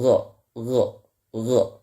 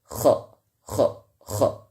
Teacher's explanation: Adnal halqi itu berada di atas tenggorokan, yang paling atas, ya, yang di sini, atau dekat dengan jadrul lisan atau akar dari lidah, ya. Ketika kita membaca huruf gha dan kha, maka kita lihat jadrul lisan bertemu dengan al-hanakul lahmi atau disebut juga dengan langit-langit yang lembut